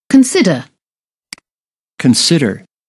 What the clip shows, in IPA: kənˈsɪd.ər